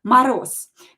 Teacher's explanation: Because voiced consonant at the end of the word becomes unvoiced